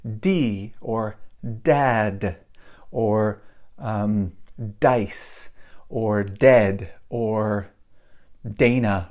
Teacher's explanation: this D is voiced the the my voice is going on